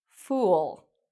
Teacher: So this has the circular lips and the long vowel sound, fool. Now this is very different from the word full.